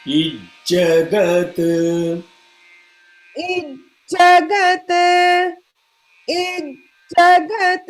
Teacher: the holding has to be little more on the J.